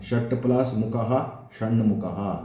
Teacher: ನೋಡಿ, ಷಟ್ ಅಂತ ಬಿಡಿಸಿ ಬರೆದಾಗ ಟ ಇದೆ, ಸೇರಿಸಿ ಬರೆದಾಗ ಣ ಆಯಿತು. ಹಾಗೆ ಟಗೆ ಅನುನಾಸಿಕ ಸೇರ್ತು, ಟ ಇರೋದು ಣ ಆಗಿ ಬದಲಾಯಿತು